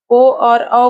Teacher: ओ और औ का उच्चारण स्थान क्या होगा? कंठ और ओष्ठ। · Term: कंठोष्ठम